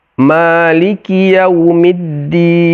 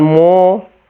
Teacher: Ma biasa, jangan mo, itu keliru. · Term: huruf istifal